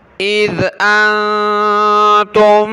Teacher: اذ زبان نکالیں ذال پر